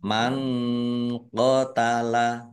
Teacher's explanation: nun sukun bertemu dengan huruf qaf bacaan ikhfa dibaca samar-samar